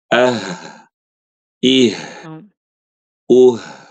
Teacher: Dari pangkal tenggorokan kayak baca A, I, U gitu ya. Tapi dia pita suaranya tuh kebuka.